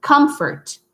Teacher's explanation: because we close the M, it kind of becomes a P. You know, the F becomes a P.